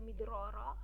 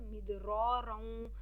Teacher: अब यहाँ पे अगर आप वक्फ करते हैं तो मिदरारा, अगर आप यहाँ मिला के पढ़ना चाहते हैं, मतलब इदग़ाम बिल गुन्ना करना चाहते हैं तो मिदरारन